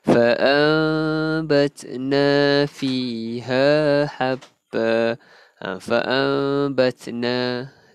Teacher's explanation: So kita menukarkan nun mati ataupun tanwin tu kepada huruf mim. Jadi kita bacanya fa'ambatna fa'ambatna. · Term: iklab